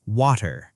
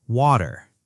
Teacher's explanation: British English keeps the T sound sharper, water. Clear T. Americans soften it, water. Oh, interesting.